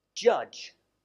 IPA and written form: ʤʌʤ (judge)